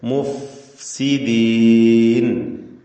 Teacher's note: മീമ് അല്ലേ ഷഫവിയാക്ഷരം, ശേഷം ഫാവും ഷഫവിയാക്ഷരം. പക്ഷെ ഫാവിന്റെ മഖ്റജാവട്ടെ താഴെ ചുണ്ടിന്റെ മധ്യഭാഗവും മേലെ പല്ലിന്റെ അറ്റവും.